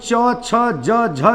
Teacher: च छ ज झ जो दिख रहे हैं ये तालू से बोले जाते हैं